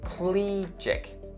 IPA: ˈpliː-dʒɪk